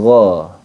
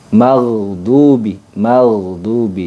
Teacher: Gha bukan go, tapi gha. Nah, ghain itu memiliki sifat memang jahar, nafasnya tertahan, kemudian dia memiliki sifat rokhawah. Rokhawah itu suaranya ngalir. Jadi salah ketika kita mengucapkan dengan go atau magdubi, magdubi ya.